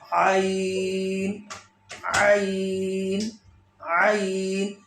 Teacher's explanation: مخرج ہے درمیانہ حلق، جیسے عین عین حلق سے نکالیں. عین عین عین، یہ حرف حلقی ہے.